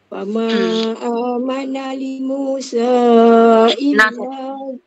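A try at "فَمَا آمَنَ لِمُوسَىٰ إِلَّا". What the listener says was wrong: Nah, satu je makcik. Fama amana li Musa. Nah, satu harokat. Dia tak panjang.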